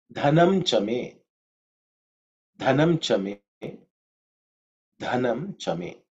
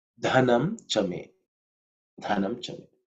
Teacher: the first letter is dha, which is the fourth letter in the tha varga, so it has to be aspirated